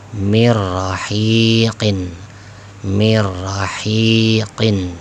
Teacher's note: jangan lama-lama idgham bila ghunna karena tanpa dengung